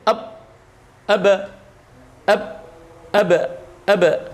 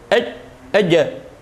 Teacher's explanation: suara yang mantul disebabkan karena benturan 2 sisi makhraj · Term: sifat qalqalah